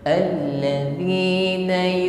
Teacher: Mengucapkan huruf zal ya, terlebih kasrah, jangan diucapkan dengan desis, bukan allazi. Allazi sifatnya jahar, tertahan nafas ketika mengucapkannya, tidak ada desis. Alladzina huruf wa ketika mengucapkannya sama sebagaimana kita mengucapkan huruf zal, laqabnya sama ya, makhrajnya ujung lidah bertemu dengan gigi sari atas.